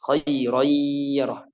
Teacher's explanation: Jadi harus keluar dari hidung setengah, dari mulut setengah ya. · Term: idgham bil gunnah